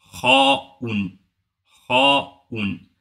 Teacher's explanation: Le son est grave. C'est ce qu'on appelle lettre emphatique.